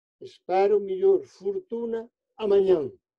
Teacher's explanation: O tónico fecha o anterior, que escrito é o, pero pronunciado u.